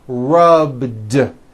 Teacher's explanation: All I did was add a voiced D sound at the end. Rubbed. It's not rubbed with an unvoiced T.